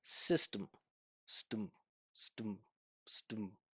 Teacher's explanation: I would not say system, stem. When I pronounce this with my natural pronunciation, there's no vowel sound in that unstressed syllable.